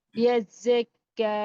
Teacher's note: کاف اور زا دونوں کو 2 بار پڑھنا ہے اور شدت اور سختی کے ساتھ پڑھنا ہے. کاف کو ایک الف کی مقدار کھینچنا بھی ہے.